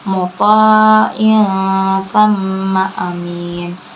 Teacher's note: gunah mim karena mim musyaddadah atau mim bertasydid, cara bacanya ditekan. Tamma amin, mad arid disukun karena mad tabi'i di akhir kalimat, cara bacanya panjang 2 harokat.